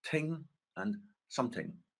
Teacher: Word initial /θ/ may also be replaced by /t/, but only in the word thing and in pronouns containing thing. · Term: th-stopping